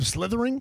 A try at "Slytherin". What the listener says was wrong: Yeah, Slytherin. No G at the end.